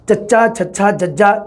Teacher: ਸਾਹ ਦੀ ਹਵਾ ਨੂੰ ਦੰਦ ਪਠਾਰ ਤੋਂ ਸਖਤ ਤਾਲੂ ਦੇ ਦਰਮਿਆਨ ਜੀਭ ਦੇ ਬਲੇਡ ਦੁਆਰਾ ਰੋਕਿਆ ਜਾਵੇ। ਟਿਪ ਤੋਂ ਬਾਅਦ ਵਾਲਾ ਹਿੱਸਾ ਜੀਭ ਦਾ ਬਲੇਡ ਤਾਲਵੀ ਧੁਨੀ ਦੇ ਵਿੱਚ ਕਿਹਾ ਜਾਂਦਾ ਉਸ ਨੂੰ।